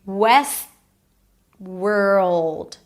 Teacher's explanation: So all these consonants are kind of squeezed in together.